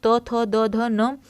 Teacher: त थ द ध न ये दंत से